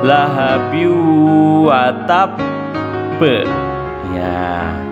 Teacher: agak ditahan dulu dua ketukan setelah itu baru memantul karena disitu ada tasnya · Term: Qalqalah